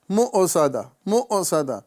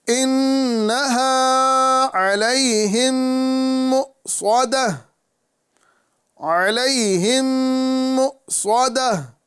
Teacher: حمزہ ساکنہ کی ادائیگی جھٹکا ہے، جھٹکے سے آواز آپ روکیں گے